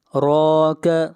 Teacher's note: را کو یہاں پر موٹا پڑھا جائے گا، را کے اوپر کھڑی زبر ہے، اور را کا قاعدہ یہ ہے کہ جہاں بھی را کے اوپر پیش یا زبر آئے گی را کو موٹا پڑھا جائے گا، اور جہاں پر زیر آئے گی را کو باریک پڑھا جائے گا۔